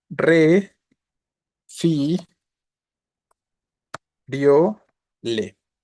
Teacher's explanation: efectivamente la tónica es la penúltima Entonces es palabra grave termina en vocal y no se acentúa